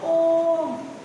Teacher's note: प्लुत स्वर होते हैं जिन स्वरों के उच्चारण में ह्रस्व स्वर से तिगुना समय लगता है। यहाँ पे हमें ट्रिपल टाइम लगता है इससे बोलने में।